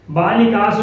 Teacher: इस सा के पहले ए आया है तो मूर्धन्य सा हुआ, और इस सा के पहले ये जो बालिकास में सा है इसके पहले का में आ की मात्रा लगी है, और जब आ की मात्रा लगी है तो फिर उस दंती सा को मूर्धन्य सा नहीं करेंगे, क्योंकि इन प्रत्याहार में ये आ नहीं आता है।